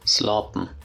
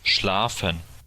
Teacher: The P sound, the P, became a F.